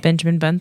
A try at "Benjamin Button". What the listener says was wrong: Kind of sounded like you said Benjamin Bun and not Benjamin Button. You said it so fast. Button. It sounded like bun.